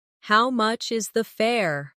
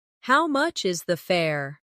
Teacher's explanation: The stress is on how much and fair.